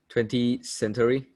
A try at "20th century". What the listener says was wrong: 20th. Okay, so you need to pronounce the TH. 20th century.